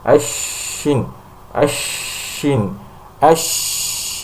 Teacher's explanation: Shin, ketika mengucapkan shin, ashin, ashin, ash, ya, itu jelas sekali ada nafas yang banyak, udara yang keluar dari mulut, karena pada saat mengucapkan huruf-huruf hamas ini sejatinya pita suara di daerah tenggorokan itu terbuka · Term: hames